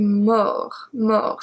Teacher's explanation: We are going from mourir to mort, mort, so we don't pronounce the T